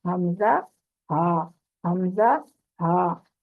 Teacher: اب انتہائی حلق یعنی آخری حصہ جو حلق کا ہے، اس سے حمزہ اور ہاں، یہ سینے کی طرف آخری حصہ، مطلب سینے کی طرف سے یہ ادا ہوں گے دونوں حروف